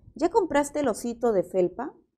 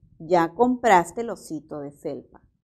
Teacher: aquí tenemos la entonación ascendente, ¿verdad? Porque es una pregunta.